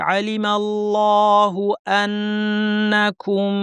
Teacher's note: আল্লাহের লাম এখানে মোটা হবে কারণ আগে জবর আছে।